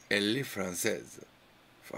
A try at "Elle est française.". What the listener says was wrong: Yeah, c'est très bien.